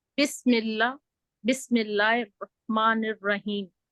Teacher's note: अपने हा को भी हल्क के दरमियानी हिस्से से अदा करना है। अपनी 2 उंगलियां रख सकते हैं जहाँ पे वो आडम जाफल होता है, जहाँ पे बच्चों के नहीं लड़के बड़े हो रहे हों तो हड्डी उभरती है थोड़ी सी गले में, वहां पे आप अगर अपना हाथ रखेंगे तो आपको बहुत आसानी के साथ हा निकल आएगी।